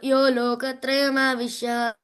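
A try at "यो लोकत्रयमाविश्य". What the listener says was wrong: అక్కడ యో లోకత్రయమావిశ్య అంతే, ఆవిశ్య లేదు అక్కడ, విసర్గ చెప్తున్నావు నువ్వు. యో లోకత్రయమావిశ్య విభక్తవ్యయ ఈశ్వరః.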